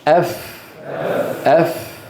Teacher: الفاء أيها الإخوة تخرج بأن يضع المتكلم أطراف أسنانه العليا على باطن الشفة السفلى